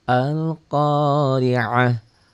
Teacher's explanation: Berubah bunyi ta-nya menjadi ha. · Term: marbutoh